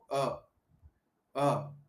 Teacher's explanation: अ बोलते समय हमारी जीभ कहीं नहीं जाती, वो मध्य में ही पड़ी रहती है, तो इसको मध्य स्वर बोला।